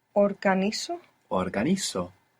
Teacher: we are also accenting the penultimate syllable